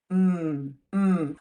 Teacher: we close our lips and hum to just let a little bit of Sound flow actually through our noses M or the sound you would make if something smelled delicious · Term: M sound